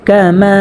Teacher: মা এখানে এক আলিফ পরিমাণ টানিয়ে পড়তে হবে। জবরের বাম পাশে খালি আলিফ হওয়ার কারণে মধ্যে তবাই হয়েছে, তো আমরা মা এখানে এক আলিফ পরিমাণ টানিয়ে পড়ব।